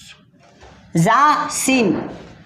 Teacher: ये इन हुर्फों को सीटी वाले हुर्फ भी कहते हैं, यानी सीटी की आवाज़ आती है ज़ा सीन बोलकर।